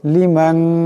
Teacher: এই নুন সাকিনের পরে শিন আসছে, এখানে ইকফা হয়ে যাবে, ইকফার একালি পরিমাণ গুণনা হবে।